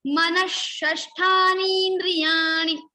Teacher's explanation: Simply we will repeat this sha, Murdhanya sha 2 times, and we will remove this ha sound, that is visarga.